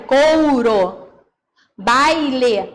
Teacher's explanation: A gente fala assim no dia a dia, mas na verdade não são 2 vogais. É uma vogal e uma semivogal. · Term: ditongo decrescente